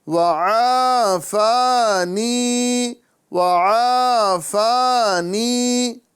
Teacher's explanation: الحمد للہ الذی اذہب عن الاذى، پھر سے دیکھیے، الحمد للہ الذی اذہب عن الاذى وعافانی وعافانی، تینوں کے اندر میں ہمیں ایک الف کے برابر مد کرنا ہے، یہاں الف مدہ پھر الف مدہ پھر یا مدہ